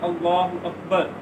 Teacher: موٹا پڑھنا ہے. لفظ اللہ کے لام سے پہلے زبر ہے تو لام موٹا پڑھا جائے گا